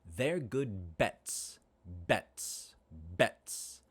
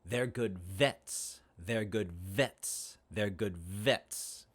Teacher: b voiced bilabial stop and v voiced labial dental fricative